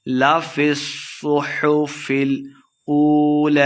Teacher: حرکات لمحہ کر کے پڑھنا ہے، هذا لفی، صاد مشدد ہے، فا کو صاد کے ساتھ ملا کے پڑھنا ہے، اور صاد کو موٹا بھی پڑھنا ہے